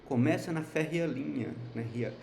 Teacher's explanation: a gente até transforma o E num I, né, num semivogal, então acaba virando uma sílaba só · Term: sinérese